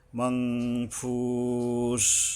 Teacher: নুনের জায়গায় মাং অনুস্বার যোগে হবে, মাংফুস